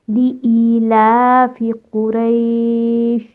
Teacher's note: لام کے اوپر بھی الف صغیرہ ہے یعنی کہ کھڑا زبر ہے، اس کو بھی آپ نے دو حرکہ کھینچ کے ادا کرنا ہے